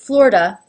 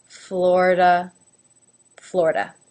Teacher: the I is not even pronounced at all. It's 2 syllables, flor, da. However, some people do bring the I into the mix a little bit, and that is perfectly acceptable.